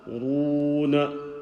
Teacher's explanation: When you have a waw sakin and the letter before it has a dhamma, the waw will be stretched, and this waw is known as a waw madda, stretched waw.